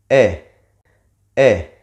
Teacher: the mouth is half closed half open and the tongue have raised